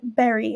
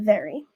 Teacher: Tagalog does not have the phoneme V English Learners will often replace it with B